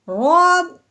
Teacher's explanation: رو اگر زبر والی ہو، پیش والی ہو، تو اس رو کو موٹا یعنی پر کر کے پڑھتے ہیں. اگر رو کے نیچے زیر ہوتی تو ہم نے رو کو باریک پڑھنا تھا.